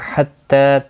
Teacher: تا کے اوپر کھڑی زبر ہے، ایک الف کی مقدار کے برابر کھینچ کر پڑھا جائے گا